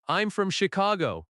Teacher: falling tone at Chicago because it is a statement.